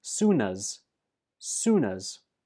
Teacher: The last sound in soon is the N, and that links to us to become soonas